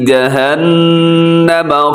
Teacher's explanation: یہاں نون مشدد ہے, یہاں پہ غنہ کریں گے